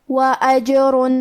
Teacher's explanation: قلقلہ کا معنی ہے حرف ساکن کو ہلانا، تو ہم جیم کو ہلاتے ہوئے یہ کلمہ کو پڑھیں گے۔